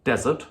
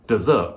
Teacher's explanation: one of them has the stress on the first syllable desert and the other has the stress on the second syllable desert